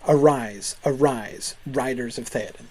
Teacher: the primary emphasis is on that R sound arise arise writers of Theoden that literates perfectly well ignore the